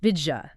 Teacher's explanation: To get from the D to the Y quickly, the tongue compromises. It hits the middle of the palate and creates a J sound. So, did you physically morphs into didja. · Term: assimilation